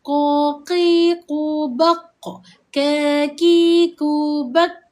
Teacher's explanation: huruf qaf dan huruf kaf iaitu kedua-dua huruf ini dia menggunakan pangkal lidah. Lidah di kawasan hujung yang dekat dengan anak tekak.